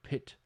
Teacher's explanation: The first consonant of pit has an extra puff of air after it, right? Which is not found after the P of spit. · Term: aspiration